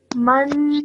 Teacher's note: when I join the meme to the noon, I hold that noon sound in my nose for 2 seconds